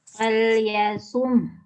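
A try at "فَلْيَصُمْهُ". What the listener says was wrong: Dia kayak yasum, kayak begitu, tapi me-nya nggak kedengeran. Fal yasum gitu. Kenapa? Karena huruf mim ya, mimnya ini huruf apa namanya? Punya sifat apa? Gunnah. Terus apa lagi? Bainiyah atau tawasud. Juga punya sifat gunnah. Gunnahnya gunnah bainiyah.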